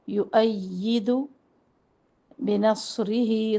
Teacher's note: صاد کو موٹا پڑھنا ہے، صاد میں سیٹی اور سختی دونوں واضح ہوں